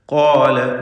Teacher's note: വ്യക്തമായി എല്ലാ അക്ഷരങ്ങളും മഖ്റജിൽ നിന്ന് ഒഴിഞ്ഞുകൊണ്ട് ഓതുക. ഖാല, വീണ്ടും ഖാഫും അലിഫും തഫ്ഖീം ചെയ്ത് തടിപ്പിക്കുക.